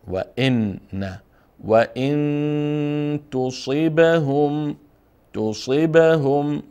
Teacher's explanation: اینجا نون مخفی میکنیم و ان میخوانیم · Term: اخفا